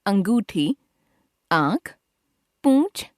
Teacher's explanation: उच्चारण में वायु मुंह और नाक दोनों से बाहर निकलती है। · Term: चंद्र बिंदु